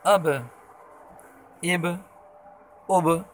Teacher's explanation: با حروف قلقلہ ہے تو ان کی مخرج میں جنبش پیدا ہو رہی ہے، اس کو قلقلہ کہتے ہیں۔